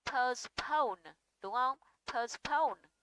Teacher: âm thứ nhất chứa nguyên âm ơ, âm thứ hai chứa nguyên âm âu, vậy thì chứa ơ và âu thì trọng âm buộc phải rơi vào âu